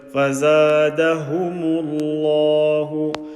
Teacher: Lam of Allah, full mouth. And this mim is empty mouth